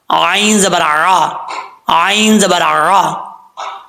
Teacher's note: عین کو پڑھتے وقت آپ نے خاص خیال رکھنا ہے کہ حمزہ کی آواز نہیں آنی چاہیے